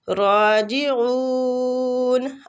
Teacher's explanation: عین وسط الحلق سے اور مد عارض سکون